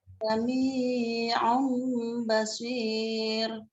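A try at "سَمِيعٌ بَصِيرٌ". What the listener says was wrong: Minya kepanjangan, minya dua saja, diayun. Ya, minya jangan terlalu panjang.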